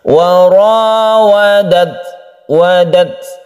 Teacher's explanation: Yang sukun ta ini tidak sama dengan huruf-huruf yang lain, dia itu mempunyai sifat hamas atau mahmus, di mana ketika kita itu membaca atau mensukun huruf ta tersebut, kita menghembuskan nafas. Ketika sudah sukun, sudah matikan kita itu ta, maka kita menghembuskan nafas sedikit.